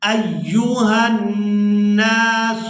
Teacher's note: ہا کو نون مشدد کے ساتھ ملائیں گے اور نون کو غنہ کے ساتھ ادا کریں گے